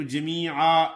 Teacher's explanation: جمیعا زبر کی تنوین ہے، رکیں گے تو جمیعا ایک زبر الف کے ساتھ ادا ہوگی